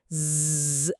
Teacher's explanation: ఇప్పుడు అదే గొంతుమీద చెయ్యి ఉంచి జ్జ్ అని తేనెటీగలా శబ్దం చెయ్యండి. ఓ అవును, గొంతులో ఒక చిన్న వైబ్రేషన్ స్పష్టంగా తెలుస్తోంది. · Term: వాయిస్డ్